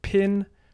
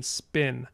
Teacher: there is a puff of air that comes after after voiceless stops in certain contexts in english and pin is one of those contexts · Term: aspiration